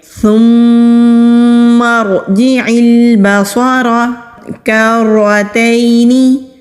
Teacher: را کو بھی موٹا پڑھیں گے کیونکہ را کے اوپر زبر ہے۔